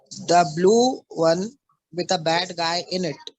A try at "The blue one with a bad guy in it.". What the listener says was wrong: बैड पर accent दो. Your bad guy is not that bad, so put accent on bad.